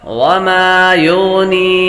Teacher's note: یا مدہ ہے، اس کو لمبا کریں گے، ایک الف یعنی 2 حرکات کے برابر کھینچ کر پڑھیں